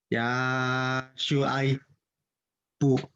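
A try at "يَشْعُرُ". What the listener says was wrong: MashaAllah, well read. Just the pronunciation of the Ain was not very clear. So try and say again.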